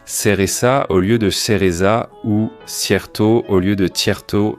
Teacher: Et il s'agit de l'occurrence du CCO qui est la tendance à prononcer le Z et le C devant I et E comme un S